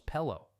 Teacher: I dropped the S from personas just like locals do, making it sound like perona. My R sounds softened into that distinctive Cuban flow where pero becomes pelo.